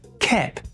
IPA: kɛp